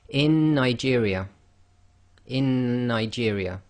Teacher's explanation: It's gemination taking place across one letter.